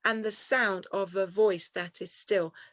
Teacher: Weak, weak, strong, weak, weak, strong. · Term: anapestic trimeter